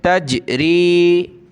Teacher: जीम पे कलकला करेंगे